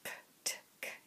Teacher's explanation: if you make those noises ptk you'll see how they move progressively backwards in your mouth